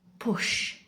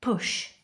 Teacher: Say push. Your throat should be silent. No vibration. Just your lips pressing together then bursting open with air.